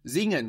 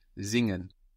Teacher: that s we pronounce like a z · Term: z sound